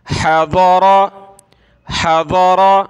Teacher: ضاد کو موٹا کریں گے اور را کو موٹا کریں گے، ہا کو گلے سے نکالیں گے